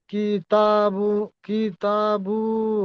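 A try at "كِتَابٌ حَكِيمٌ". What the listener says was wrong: কিতাবু হবে কেন বা দুপেশ বুন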